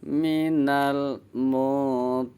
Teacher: Huruf ro-nya dibaca panjang karena kasrah jadi ri, terus dipotong pendek na.